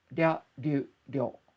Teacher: This can be somewhat challenging to pronounce sometimes because it's that darirurero, that tap sound combined with a Y sound